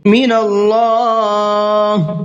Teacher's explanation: من اللہ، اللہ کے نام سے پہلے زبر ہے، اس لیے اللہ کے لام کو پر کر کے پڑھیں گے